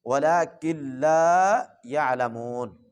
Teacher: کاف کو لام کے ساتھ ملانا ہے، نون کو یہاں پہ نہیں پڑھنا، نون کو سائلنٹ کر دینا ہے کیونکہ اس کے اوپر جزم ہے، وَلَٰكِن لَا يَعْلَمُونَ۔